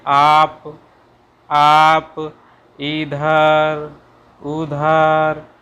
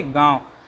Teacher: गांव शब्द को बोलने से नाक और मुंह दोनों क्रियाशील हो रहे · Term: अनुनासिक